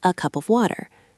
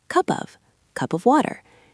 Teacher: The word cup and the word of join together. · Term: linking